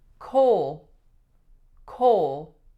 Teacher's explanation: we have the vowel O, and it goes right into a dark L sound, ul, coal, coal.